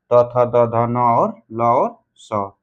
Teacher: जिनका उच्चारण ऊपर के दांतों पर जीभ के लगने से होता है।